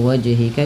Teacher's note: wajhika juga harus memantul karena ia bacaan qalqalah